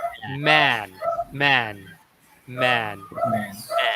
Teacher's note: the sound actually lies between the ah sound and the a sound so it's ah ah man man man so it's man what's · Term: AE